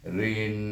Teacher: Kemudian ra tersebut kita berjumpa dengan alif lam syamsiah, maka kita baca dengan idgham syamsi, di mana huruf ra kita idghamkan dengan huruf nun, jadi bunyinya rin. Oleh kerana nun ni bertasydid, kita dengungkan dia rin sampai di pangkal batang hidung kita